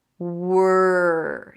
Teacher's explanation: you start with a W. Make sure that there is no vowel in between and you pull the tongue in for the R.